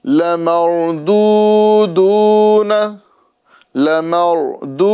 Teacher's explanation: را کو پر کریں گے اور 2 مرتبہ یہاں بھی واو مدہ کریں گے